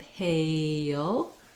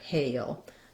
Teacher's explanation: when i move from the a to the uh shape hail there's a little bit of a hidden glide there